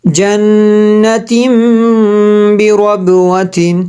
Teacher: نون مشدد پہ غنہ ہوا, آگے اقلاب کی وجہ سے غنہ ہوا